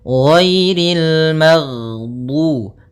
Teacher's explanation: Jahar yaitu tertahannya nafas kita. Jadi ketika melafalkan ghain, nafas kita tertahan, suara kita dialirkan.